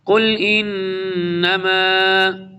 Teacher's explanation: غنہ کریں گے، ادغام بھی ہوگا، نون مشدد ہے۔